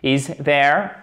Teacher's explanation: Du coup, on remonte sur la fin de la question l'intonation. Is there? Et vous remontez.